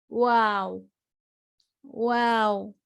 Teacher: जब हम वाव कहेंगे तो हमारे होठों से दांत नहीं लगेंगे, या होठों से होठ नहीं लगेंगे, या मुझे भींच के मुंह अपना नहीं खोल के खोलना है, वाव, खोल के पढ़ना है वाव।